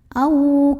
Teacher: Karena ada waw sukun sebelumnya fathah. Maka cara membunyikannya cukup kita lembutkan atau lunakan. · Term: huruf lin